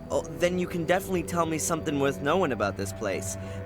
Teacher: Your accent is non-rhotic. That is, you don't sound the phoneme R at the end of a syllable, or before consonants.